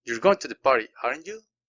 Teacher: la entonación empieza abajo y al final termino con el volumen arriba.